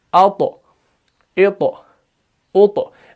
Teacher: کیونکہ اس کے اندر بھی صفت قلقلہ ہے. طا جب ساکن ہوتا ہے تو اس کو قلقلہ کے ساتھ ادا کیا جاتا ہے